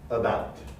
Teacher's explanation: the unstressed uh vowel is the the first sound in the word about so it's weaker than the uh it's shorter in duration it's